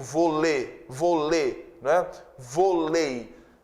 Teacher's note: O E de vôlei, ele é vogal porque ele não tem som de I, ele tem som de E. Eu digo volê, né?